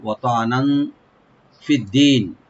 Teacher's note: থাকবে, ত এখানে ডিপ করে আইনটাকে রাইট দিতে হবে, ওয়াতা নান, এখানে নুন উপরে যে তানবিন আছে এখানে আমরা লাইট গুণা করব